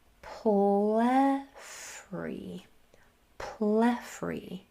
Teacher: Accenting that first syllable, we have plethry.